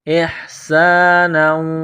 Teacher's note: حمزہ کو ہا کے ساتھ ملانا ہے، سین میں سیٹی کی آواز پیدا کرنی ہے